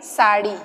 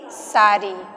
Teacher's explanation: ड़ का प्रयोग ब्रज भाषा में रा हो जाता है